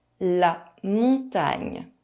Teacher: GN is pronounced [ɲ]. It is a bit tricky for English speakers as there is no English equivalent.